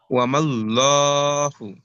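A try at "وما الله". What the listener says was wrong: ওয়ামাল্লাহু এমন হয়, ওয়ামাল, ওয়ামাল, মোটা করে ধরতে হবে।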